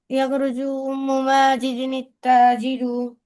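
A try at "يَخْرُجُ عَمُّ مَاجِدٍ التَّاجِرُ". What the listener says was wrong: উম্মু না, আম্মু। ইয়াখরুজু আম্মু মাজিদিন তাজিরু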